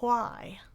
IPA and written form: ʰwaɪ (why)